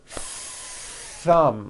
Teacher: in two beats one two thumb like that you see that notice how long i'm holding the th sound